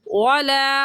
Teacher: वाव का मखरज ये है कि दोनों होंठों को गोल करने से वाव अदा होता है। तो ये होगा वाला, होंठों को गोल करके अदा करेंगे।